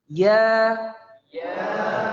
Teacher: Mirip pengucapannya, tapi di sini ya-nya bukan ya mad sehingga keluarnya dari tengah lidah